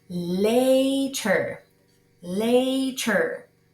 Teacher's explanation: una d continuemos con later later escuchen que no digo later no estoy pronunciando la e